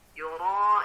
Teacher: ini adalah mad wajib mutasil. Nah, dibaca panjang 4 sampai kepada 5 harokat.